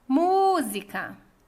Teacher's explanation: A sílaba tônica é mu e é a antepenúltima. Então, é uma palavra proparoxítona.